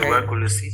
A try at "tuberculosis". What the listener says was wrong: Pronuncia la letra T y la letra B. No, pronuncia la letra T en inglés del alfabeto. T, ¿y cómo sería la B?